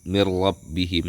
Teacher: Nun atau tanwin tersebut dilebur dengan huruf setelahnya tanpa ada dengungan. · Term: idgham bila ghunah